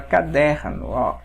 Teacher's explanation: Porém, pessoal, olha só aqui a palavra caderno, ó, o der é a sílaba mais forte aqui, portanto, isto é uma paroxítona